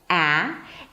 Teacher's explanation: The as in cat is an open front vowel. A. And to say this sound, you have to drop your jaw quite a lot.